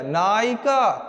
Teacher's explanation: नायिका जब बोल रहे हैं ना तो य नहीं आएगा इ आएगा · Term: अर्ध स्वर